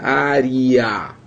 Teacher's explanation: Esse E aqui, na verdade, ele é pronunciado como se fosse um I